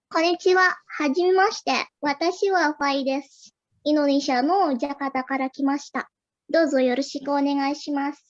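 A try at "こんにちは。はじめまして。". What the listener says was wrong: Ii desu ne.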